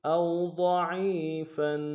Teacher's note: ضاد کو موٹا ادا کریں گے